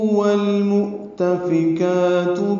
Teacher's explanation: والمؤتفکات میں واو ہونٹوں کی تمام گولائی سے ادا کرتے ہوئے لام سے ملائیں گے، اظہار قمری ہے میم کی وجہ سے، مؤ میں حمزہ ساکن واو کی شکل میں ہے اور اسے جھٹکے سے ہم پڑھتے ہیں